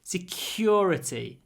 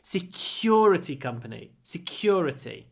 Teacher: say security security make the the stressed all long security and try to aspirate the C